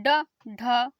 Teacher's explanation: और डा में कम हवा निकलती है, तो अल्प प्राण में। और डा की अपेक्षा ढा में अधिक हवा निकलती है, तो किस में चला गया, महाप्राण में।